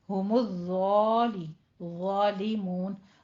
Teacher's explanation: پر پڑھنا ہے، ضوائے میں سیٹی کی آواز بھی نہیں ہے، ضوا کو آپ نے فتحہ قائمہ کے ساتھ پڑھنا ہے